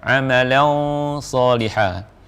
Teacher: Ini tanwin sama dengan nun sukun bertemu dengan shad, ikhfa yang dibaca dengan tebal juga